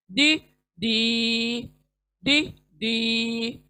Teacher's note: जबान का किनारा दाढ़ों के मसूड़ों को लगने से दी। अभी ये भी पुर पढ़ेंगे, मोटा पढ़ेंगे। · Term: यूनिक डी